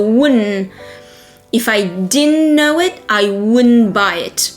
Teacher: The didn't, that D and T, they become an N.